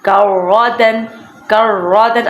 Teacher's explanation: کرۃن، کر، اب یہ را ہے، را کے اوپر تشدید اور زبر ہے، جہاں را کے اوپر زبر آ جائے اسے را کو موٹا ادا کرتے ہیں